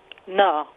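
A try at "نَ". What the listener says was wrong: Na. Make sure it's clear. Na. Yeah, because it has to be made long, and that sound has to come across. Na.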